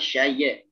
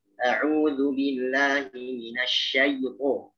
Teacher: jadi ya-nya itu dilenturkan dengan sifat lin, ya, tidak dengan qalqalah